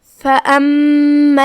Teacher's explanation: کلمت فَأَمَّا میں یہاں میم پہ تشدید ہے، لہذا ہم 2 حرف کی مقدار میں میم کو پڑھیں گے اور تشدید کو ظاہر کریں گے، جو کہ تشدید کی اصلیت 2 حرف ہوتی ہے.